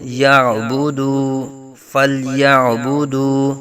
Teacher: واو ساکن سے پہلے پیش دال کے اوپر واو مدہ کا قاعدہ ایک الف تک کھینچیں گے